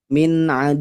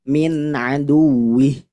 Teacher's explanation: wau sukun tidak perlu ditahan terlalu lama bu ya tidak perlu dengung